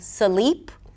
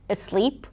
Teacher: And this is why when speakers try to say words with clusters, and they don't think about it, automatically the mouth kind of wants to break those clusters cause they don't exist in their native language, they're not allowed. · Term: breaking consonant clusters